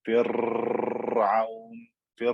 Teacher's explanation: vibrated more than once to create more than one R sound. In English, we would call this the rolling R.